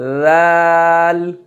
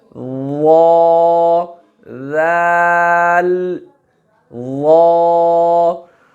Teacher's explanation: ذال جو ہے وہ موٹا نہیں ہوگا، ذال، لیکن وا جو ہے اس کو ذال کی نسبت تھوڑا سا پر کر دیں گے اس کو، وا، ذال، وا۔